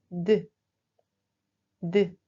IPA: d